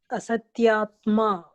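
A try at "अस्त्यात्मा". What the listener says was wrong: That's not Satyatma. There is no Asat. Astyatma. You read that word first properly.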